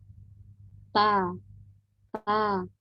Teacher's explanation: Huruf ta keluar dari tempat pertemuan antara ujung lidah dengan pangkal gigi seri atas. · ujung lidah tadi kan nempel nih ke pangkal gigi seri atas. Waktu dia turun, keluar suara, nah itulah suaranya huruf ta.